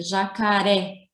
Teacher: a sílaba mais forte é o ré. Está na última sílaba, ela é uma palavra oxítona, tá bem?